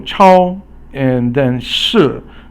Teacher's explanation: 超 is 一 声 or first tone, and 市 is fourth tone, which is a falling tone. So 超 is a high tone, flat, and then 市 is, so it means supermarket.